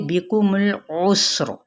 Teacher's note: सीन पे सीटी और रा पुर पड़ा जाएगा